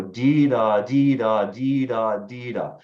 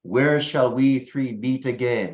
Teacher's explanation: a type of verse where you have four pairs of syllables with the syllable with the stress on the first syllable of each pair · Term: trochaic tetrameter